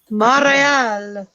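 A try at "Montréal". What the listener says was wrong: You don't put the T in French. Montreal.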